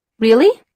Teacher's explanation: the speaker uses a sharp Rising intonation to show surprise or disbelief